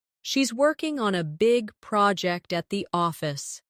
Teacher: Stress working big project and office.